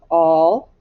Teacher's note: we hear short o and we do hear the l though